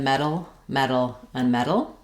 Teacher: So they all have the first syllable stressed and they have the e vowel like in red or met. They all have a flap sound in the middle. In the dictionary you may see that this written as a t.